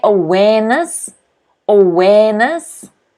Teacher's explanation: notice the stress again is on the second syllable